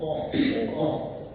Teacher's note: Usahakan huruf O agak ke dalam lagi, ya, agak ke dalam. Jadi suaranya tebal.